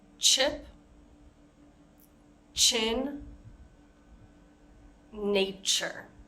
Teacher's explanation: the CH sound is different from sh because it's shorter and A Little Bit Stronger it's more forceful